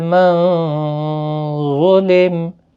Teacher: نون ساکن کے بعد حروف اخفا کا ضا آیا ہے، اخفا حقیقی ہوگا، گنہ کے ساتھ پڑھیں گے۔ ضا مستعلیہ بھی ہے، پر بھی پڑھا جائے گا۔